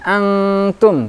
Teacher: nun sukun bertemu dengan huruf ta samar menyamarkan huruf nun pada huruf t tidak dengungnya tidak dengung tapi samar anggukan Antum tapi n lidahnya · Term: Ikhfa